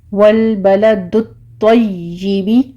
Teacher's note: یا کے اوپر آپ نے سختی کرنی ہے لیکن اس کو جیم یا شین میں کنورٹ نہیں کرنا، تشین نہیں کہنا آپ نے۔ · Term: تشدید